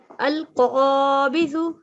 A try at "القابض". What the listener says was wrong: Just one thing, this is dal. So in Arabic, this is not pronounced with a buzzing sound. It is pronounced with a thick sound. Al-qabidu.